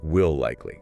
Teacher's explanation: Here, you don't pause between them. The L sound at the end of will just stretches, it flows right into the L at the start of likely. So it's like will likely. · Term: A longer L